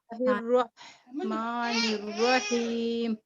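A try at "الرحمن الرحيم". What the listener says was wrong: ٹھیک ہے ہم یوزلی کیا کرتے ہیں رحمان پہ اردو میں رحمان رحمت رہ کر کے بولتے ہیں نا اے ساؤنڈ اے نہیں ہوگا آ ساؤنڈ ہوگا.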